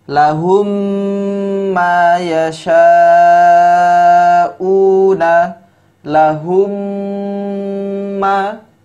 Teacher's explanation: Ini rumusnya, yaitu mim sukun bertemu dengan huruf mim, maka hukum bacaannya adalah idgham mimi. Cara membacanya yaitu memasukkan huruf mim kepada huruf setelahnya ya. Dengan cara apa? Didengungkan.